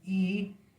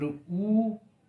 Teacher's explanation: when you pronounce E, your lips are spread. But when you pronounce the word U, so your lips are rounded.